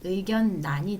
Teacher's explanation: 의견 란에서 앞자 니은 때문에 란이 아니라 난 의견 난이 되고요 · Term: 유음화 예외